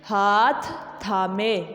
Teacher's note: ہاتھ تھامے، یہ دو تھ اکٹھے ہو گئے